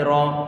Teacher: Kemudian ra-nya dia difathahkan, perlu kita tebalkan ra, bukan ra, tapi ra.